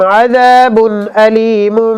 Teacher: کیوں؟ اس لیے کہ با پر تنوین ہے اور اس کے بعد حمزہ ہے، یہاں اظہار ہوگا اور غنہ نہیں ہوگا